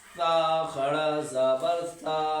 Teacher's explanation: ثا، یہ زبان کی نوک ثنایا علیہ کے کنارے سے ادا ہوتا ہے